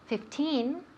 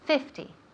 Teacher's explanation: the emphasis the accent falls on the first syllable